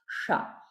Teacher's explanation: So in Ashtanga, or even Krishna, Vishnu, it is the rolled Shakara, Murdhanya Shakara it's called.